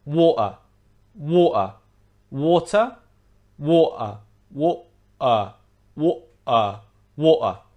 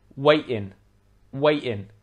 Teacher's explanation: the letter t as we discussed before is often replaced with a glottal stop